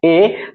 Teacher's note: जैसे कि ए बोलते हैं, ए, तो कंठ के साथ साथ जीभ हमारा जो है कि तालु में भी सटता है। ठीक है, कंठ से हम ए बोलते तो हैं, इसके साथ साथ जीभ जो हमारा है वो ऊपर जाके तलवा में सटता है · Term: कंठ तालव्य वर्ण